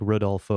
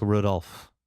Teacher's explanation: the O at the end of your name, I notice you really don't pronounce it.